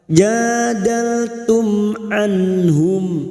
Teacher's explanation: mim sukun lagi bertemu Ain dibaca jelas tanpa mendengung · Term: Idhar syafawi